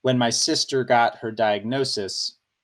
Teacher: the first I think stressed syllable is the first syllable of sister